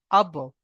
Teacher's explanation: বা হলো হুরুফে কলকলা, তাই বাকে কলকলা করে তার ডান দিকে অক্ষরের সঙ্গে মিলিয়ে পড়তে হবে।